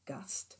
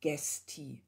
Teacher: auch hier spricht man von einer Hebung von A zu E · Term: primären Umlaut